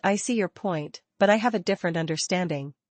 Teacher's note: intonation matters, let your voice rise on point and fall on understanding